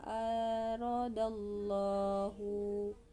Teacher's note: terdapat hukum lam jalalah tafkhim karena sebelum lamjalalah terdapat huruf Dal berharakat fathah